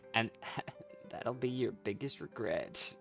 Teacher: I think I'm too airy. I'm way too breathy